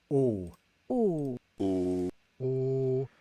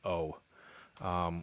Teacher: And it's a steady state continuous vowel. So English speakers will make this a diphthong. It was like O, which is not exactly that.